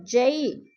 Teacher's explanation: یالین کو ہم نے لمبا بھی نہیں کرنا اور جھٹکا بھی نہیں دینا